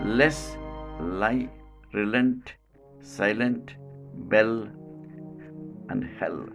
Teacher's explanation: tongue and the manner of articulation is lateral because the sound the airstream escapes at the sides of the tongue